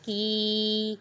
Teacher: کاف پہ یا مدہ ہو رہا ہے کیونکہ یا ساکن سے پہلے زیر ہے